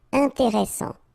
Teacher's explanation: S, strong, and it opens the pronunciation of your E. Intéressant.